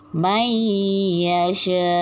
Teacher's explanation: nun mati ni dimasukkan dalam huruf ya dengan dengung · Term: idgham ma'al gunnah